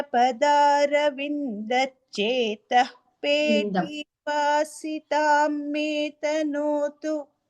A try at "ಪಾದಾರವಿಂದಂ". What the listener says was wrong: it is ಪಾದಾರವಿಂದಂ ನಾಟ್ ಪದಾರವಿಂದಂ